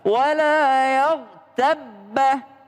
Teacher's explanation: Tapi digabung melebur dia karena ba yang kedua ada tasdidnya.